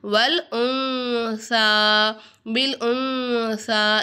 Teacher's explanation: சுக்குன் பெற்ற நூனுக்கு அடுத்ததாக, அதாவது நுனை சாக்கினுக்கு அடுத்ததாக சா வந்துச்சுன்னா இங்கே நம்ம வந்து எஹுஃபாவுடைய சட்டத்தை ஃபாலோ பண்ணணும். நூனை சாக்கினை குன்னா செஞ்சு ஓதணும்.